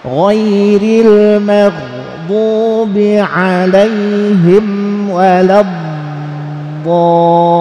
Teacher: tempatnya itu di tepi lidah kiri atau kanan diangkat ke geraham atas ya.